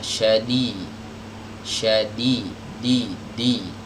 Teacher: Jadi ujung lidahnya ini nempel ke pangkal gigi seri bagian atas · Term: huruf dal